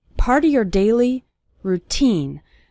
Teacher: the syllable teen is stressed in the word routine